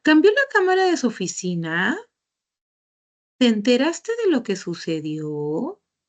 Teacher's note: ahí el enunciado termina de manera ascendente